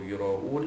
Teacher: Ra'un, ra alif di atas ra itu bertemu dengan hamzah dalam satu kalimah, itu yura'un, hukum dia is mad wajib muttasil, wajib dibaca pada kadar 6 harakat